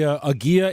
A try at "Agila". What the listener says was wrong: only one L so you pronounce the L if it's two L's that's when it's silent